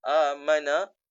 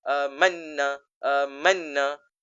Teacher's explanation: Nun mati tersebut bertemu dengan nun juga. Maka bila nun mati bertemu dengan nun, bacaan tadi didengungkan. Amanna tidak dibaca amana.